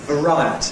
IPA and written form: vəˈraɪəti (variety)